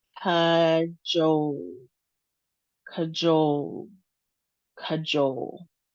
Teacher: Two syllables and we have the long O sound, jole sound. And the second syllable is emphasized.